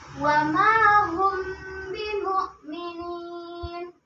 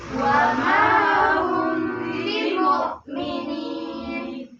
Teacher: Yakni mim mati bertemu dengan huruf ba. Cara membacanya, mimnya disamarkan dan disertai dengung. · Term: ikhfa syafawi